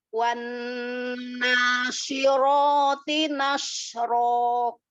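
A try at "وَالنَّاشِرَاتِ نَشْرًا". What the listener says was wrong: Wa, huruf waw fathahnya selesaikan dulu. Wan, wa. Wanna. Huruf waw fathahnya dijelaskan, jangan langsung masuk ke nun.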